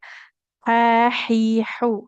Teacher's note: untuk huruf ha fil bahri di tengah tenggorokan atau halqi